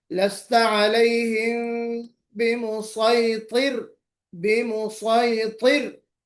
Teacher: रा बारीक ही पढ़ी जाएगी